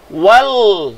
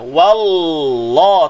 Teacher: Wallahu, wa nipis, Allah baca tebal, dua harakat. Wal, daripada sebut wa, terus berpindah ke makhraj lam. Wal, ingat, pergi ke hujung lidah, suara pergi ke hujung lidah. Wallah, tanpa muncung bibir.